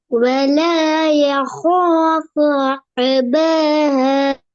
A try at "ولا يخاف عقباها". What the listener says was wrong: عين உச்சரிங்க عين ஊட உச்சரிப்பு வரணும் عقوبة عين عو ولا يخاف عقوبتها عود சவுண்ட் வருது இல்ல